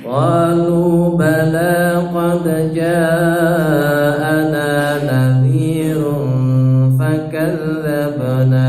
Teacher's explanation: bala lanya dua ketukan, qad mantul, ja empat ketukan, ana dua ketukan